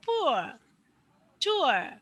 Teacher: আরটা তোমার গলার মধ্যেই থাকবে, গলা থেকে বার হবে না